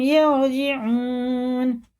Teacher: واو ساکن سے پہلے پیش ہے، الٹے پیش کی طرح کھینچ کے پڑھیں گے